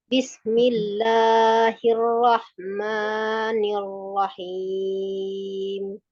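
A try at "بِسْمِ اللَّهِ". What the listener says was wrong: Bismillahi. Hi-nya diperjelas lagi, Bu. Bisnya diselesaikan dulu dengan sempurna. Bismillah. Hi-nya dari mana? Ujung tenggorokan apa, tenggorokan bagian bawah?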